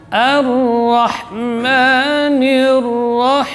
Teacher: A-nya tipis lagi, jadi A tidak boleh terpengaruh oleh huruf Ra, tidak boleh tebal.